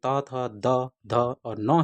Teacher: उच्चारण जो है जीवा के अग्र भाग द्वारा दांतों को स्पर्श करने से होता है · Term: त वर्ग